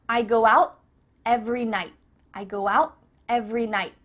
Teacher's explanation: your tongue is at the top of your mouth you're about to make the t sound but no air goes through so it's just stopped at the top of your mouth i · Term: cut off the t